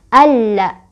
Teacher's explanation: lamnya tidak dibaca tapi kita langsung baca ke lam yang kedua. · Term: alif lam syamsiyah